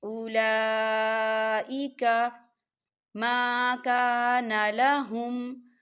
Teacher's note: یہاں لام کے پر کھڑی حرکات بھی ہے اور مد بھی ہے، تو اسے چار حرکات کے برابر کھینچ کے پڑھا جائے گا